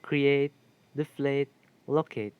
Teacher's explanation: bisyllabic verbs ending in ate will take primary stress on the ate